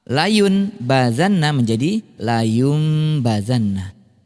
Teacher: Iqlab itu berarti mengubah atau bunyi nun sukun atau tanwin ini tadinya bunyinya an, in, un, itu berubah menjadi am, im, ketika nun sukun atau tanwin ini bertemu dengan salah satu huruf hijaiyah yaitu huruf ba. Ya, jika nun sukun atau tanwin bertemu dengan ba, maka bunyi nunnya tidak lagi menjadi nun tapi menjadi mim